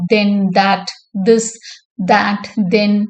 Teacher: Ith is a voiced dental fricative.